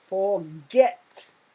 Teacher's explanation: It has one consonant, it ends with a consonant, T, and the second word or syllable is stressed, forget.